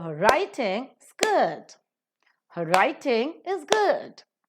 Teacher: In this, writing and good are accented.